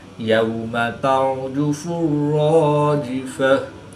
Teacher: गोलता को वक़फ़ की हालत में हाँ साकिन से तब्दील करके पढ़ेंगे। · रा साकिन से पहले ज़बर है, तो रा को पुर पढ़ेंगे। रा मुशद्दिद पर ज़बर है, तो रा को पुर यानी मोटा पढ़ेंगे।